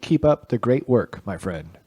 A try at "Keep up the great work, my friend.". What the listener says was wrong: You gotta be like, dude. That's how that reads. You don't say dude in a banker tone.